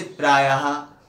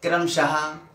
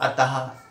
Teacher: विसर्ग का उच्चारण हा के समान होता है,